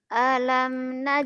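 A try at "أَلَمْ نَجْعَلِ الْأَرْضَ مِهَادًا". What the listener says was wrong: jangan alam hanya pendek, nggak ada madnya, kosar pendek.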